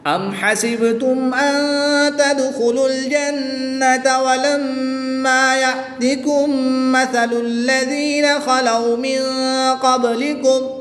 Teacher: میم ساکن کے بعد دوسری میم ہے، تو یہاں پر ادغام شفوی ہوگا، یہاں پر بھی غنہ کر کے پڑھیں گے